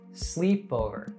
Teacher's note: The other syllables o and ver are pronounced with less stress